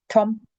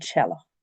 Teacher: T with a broad vowel is just a normal T, Tom. And with a slender vowel, a ch, like in cello.